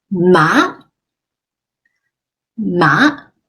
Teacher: I used the second tone because it's up